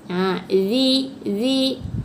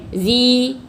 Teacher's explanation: Jadi huruf za, kita makhraj dia, kita hendaklah mengeluarkan sedikit lidah. Hujung lidah keluar sedikit antara gigi atas dan gigi bawah.